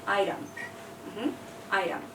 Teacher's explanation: we have a t between two vowels an i and an e and so the T tries to become a d it's not an em but it's somewhere in between it's an